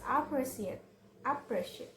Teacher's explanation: Four syllable word with the stress on the second syllable is appreciate